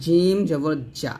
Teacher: আর এই যে ঝা, রর পরে যে হরফটা ঝা, এই ঝা যখন উচ্চারণ করবেন তখন জিব্বাটা নিচের দাঁতে লাগাবেন, জা জবর জা, আর জিম যখন উচ্চারণ করবেন জিব্বার মধ্যখান তার বরাবর উপরে তালুর সঙ্গে লাগে উচ্চারণ করতে হবে, জিম জবর জা, এরকমভাবে উচ্চারণ করতে হবে।